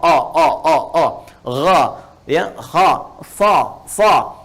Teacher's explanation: Ya, kalau kita ucapkan, kayak kita mengucapkan huruf o. Jadi kayak dari dalam itu kayak ada lidah yang paling belakang kayak ke atas, kayak mau ke langit-langit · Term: isti'la